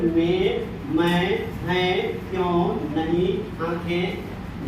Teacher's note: तो यहाँ देखिए में, मैं, हैं, क्यों, नहीं, आंखें जैसे जो शब्द हैं इनके ऊपर अनुनासिक अनुस्वार, जैसे आप बोलते हैं तो दोनों से ध्वनि निकलती है ना, में मुंह और नाक दोनों से निकलती है, लेकिन यह अनुनासिक के रूप में, यहाँ अनुस्वार के रूप में ही है।